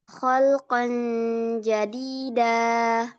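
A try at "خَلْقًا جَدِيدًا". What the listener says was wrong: Ya, dia ikhfa, yang mana itu artinya samar ya. Jadi nggak bukan n, bukan kholqon jadida, tapi kholqon jadida.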